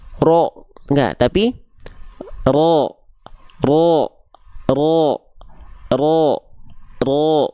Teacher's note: ketika mau masuk vokal a pangkal lidahnya naik Ah keluarnya jadi vokal o teman-teman sekalian terdengar seperti vokal o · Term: huruf tebal